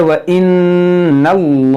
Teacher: इसमें जलालत से पहले ज़बर है, तो इसको मोटा पढ़ेंगे